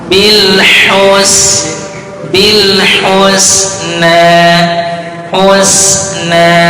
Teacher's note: huruf sinnya tipis, haknya lembutkan